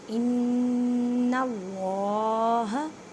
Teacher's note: وابصارہم ان اللہ, ان نون مشدد ہے, گنہ کریں, آواز کو ناک میں لے کے جائیں ایک الف کی مقدار میں